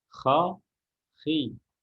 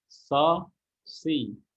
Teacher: Dan kalau huruf punya sifat al-istilah, karena dia huruf atau sifat wajib, sifat dzatiyah, sifat hak, maka kita harus tunaikan dalam kondisi apapun. Huruf kha dalam harokat kasrah pun dia harus tebal.